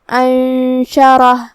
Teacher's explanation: کلمت انشرہ میں یہاں شروعات میں حمزہ ہے، یہ حمزہ قطع ہے تو ہمیں اسے ظاہر کرنا ہے. پھر نون ساکن ہے اور حرف الشین ہے اس کے بعد، شین حروف الاخفاء میں سے ہے، تو ہمیں یہ حکم کو غنہ کے ساتھ ادا کرنا ہے